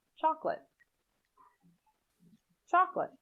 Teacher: in chocolate the second o is not generally pronounced